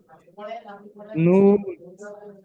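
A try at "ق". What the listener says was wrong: নুন নয়, ভালো করে দেখুন। কফ, মুখ গোল করে পড়তে হবে, দুটো নোক্তা আছে উপরে, মুখ গোল করে পড়তে হবে। তিরালিফ পরিমাণ টান হবে।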